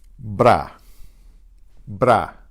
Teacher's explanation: the single R combined with another consonant. It's like the R becomes a D in English.